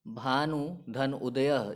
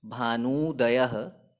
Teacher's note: भानु शब्द के अंत में ह्रस्व उ और उदयः के प्रारंभ में भी ह्रस्व उ है। दोनों ह्रस्व उ को मिलाने पर जो परिवर्तन या विकार हुआ वो दीर्घ ऊकार के रूप में हुआ।